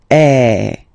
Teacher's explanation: So it's really open. I mean, the sound is really open, and normally your mouth should be opened a little bit more than with the accent aigu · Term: accent grave